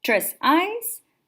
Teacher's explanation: tres is unstressed eyes is stressed